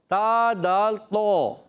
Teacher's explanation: تو، بغیر ہونٹ گول کے